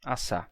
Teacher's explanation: no meu sotaque, o R em posição final ele não é vibrado, né? Não é assar, assar. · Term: Aspirado ou mudo